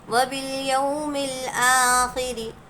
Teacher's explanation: رو کے نیچے زیر ہے اس لیے رو باریک پڑھی جائے گی